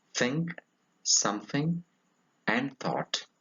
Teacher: It is a voiceless dental fricative.